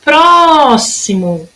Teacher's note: A minha sílaba tônica, que durou mais tempo, foi o pró. Próximo, durou mais tempo.